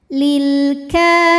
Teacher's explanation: karena ada alif lam yang menghadapi huruf qamariah yaitu huruf Kaf maka lam sukun ini kita bunyikan dengan jelas jadi bunyinya ee lam ini tawasut ya suaranya mengalir tapi tidak · karena ada huruf Kaf dengan baris fathah yang panjang maka huruf Kaf ini kita panjangkan Cukup dua harakat saja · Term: alif lam qamariah